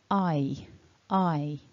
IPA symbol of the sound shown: aɪ